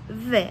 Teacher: Les cordes vocales vibrent.